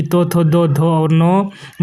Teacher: जिन वर्णों का उच्चारण दांत की सहायता से होता है उन्हें दंत ध्वनियां कहते हैं